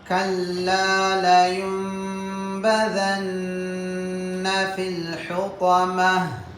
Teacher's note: கடைசியில் அத்தாஉல் மர்பூத்தா, இந்த தாவை நிறுத்தும் போது ஹாவாக மாற்றி நிறுத்தணும்